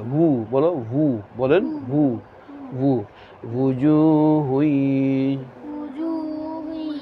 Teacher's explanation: ওয়াও উচ্চারণ হয় দুই ঠোঁট গোল করিয়া সামান্য খোলা রাখিয়া দুই ঠোঁট গোল করিয়া সামান্য খোলা রাখিয়া ভু বলো ভু বলেন